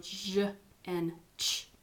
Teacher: Affricates and fricatives have air coming through and you actually don't touch, but it's close enough that it makes like a rush of air through that. So when you go j and ch, you almost touch, but it forces the air to go through a very small place.